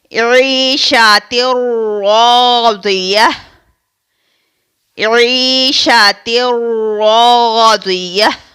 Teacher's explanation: یہاں پر آپ دیکھیں کہ 2 زیر، یعنی تا کے نیچے جو 2 زیر ہے اس کو تنوین کہتے ہیں، اور تنوین کے بعد حروف را آ رہا ہے، یعنی حروف ادغام میں سے را آ رہا ہے، تو اس کو ہم بغیر غنہ کے ادا کریں گے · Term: ادغام بلا غنہ